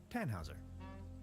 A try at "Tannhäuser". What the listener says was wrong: We'd pronounce it Tannhäuser with an umlaut.